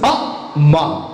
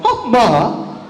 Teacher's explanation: You don't raise one and lower another. You don't stress one and leave another unstressed.